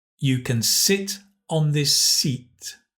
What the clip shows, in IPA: I and i: